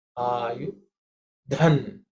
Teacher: Dha is again the fourth letter in the tha varga, should be aspirated.